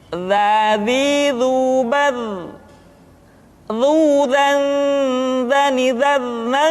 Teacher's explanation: diucapkan dengan menyentuhkan ujung lidah dengan dinding dua gigi seri bagian atas seperti kita mengucapkan huruf tha.